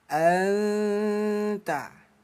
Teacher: ini bunyi nun kita baca samar ya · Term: ikhfa hakiki